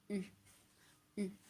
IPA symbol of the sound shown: y